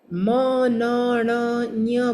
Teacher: હવે એની અંદર આપણે જે મ, ન, ણ, ન્ય બોલીએ છીએ ને એ નાકમાંથી બોલીએ તો એ આપણે નાકમાંથી કાઢીએ.